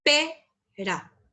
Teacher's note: Pero la P en la E se carga la voz, entonces es tónica. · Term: sílaba tónica